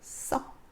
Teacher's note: 쓰다는 의가 탈락되죠. 모음 의가 탈락됩니다.